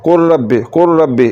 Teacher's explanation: ایسے نہیں پڑھنا قل ربی قل ربی. لام کو را میں ملانے سے لام جو ہے یہ ختم ہو جائے گا. قل کیسے پڑھنا ہے، قل ربی قل ربی. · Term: مکمل ادغام